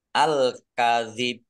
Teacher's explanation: berdiri Mad thi'i alkadib alif lam Komariah ditandai lamnya dibaca sukun kemudian bnya dibaca sukun karena wakaf dan qolqolah ditampakkan qolqolahnya ditampakkan pantulannya